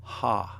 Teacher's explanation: alpha with the rough breathing mark is pronounced ha instead of a